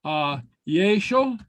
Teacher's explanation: So you could hear a Y with the narrow vowel, yeshel. You wouldn't really hear a reshel.